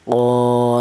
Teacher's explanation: Alasannya ada alif yang tidak huruf-huruf yang berharakat fathah. Dipanjangkan cara bacanya yaitu panjang satu alif ya. Satu alif itu sama dengan dua harakat. Dua harakat sama dengan dua ketukan. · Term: mad thobi'i